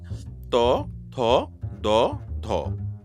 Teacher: ত থ ড ধ বলার সময় আমাদের জিহবার অগ্রভাগটা দাঁতের পাটিতে ধাক্কা দিচ্ছে। যেহেতু দাঁত থেকে উৎপন্ন নাম হলো দন্তবর্ণ।